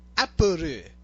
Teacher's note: They don't have the l sound in their alphabet, or not really their alphabet, but in their collection of sounds. So they replace it with ru.